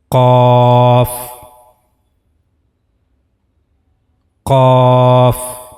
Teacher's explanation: So while reading qaf, you have to use this part of your palate. Roof of the mouth in the area of soft palate.